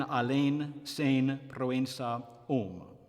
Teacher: Stressed E or O before a nasal consonant will be closed by nasal raising